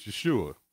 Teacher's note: for salvation is yeshua with the emphasis on the last syllable the messiah's name is yeshua with the emphasis on the you which is pronounced ooh as in the word soon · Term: emphasis on the U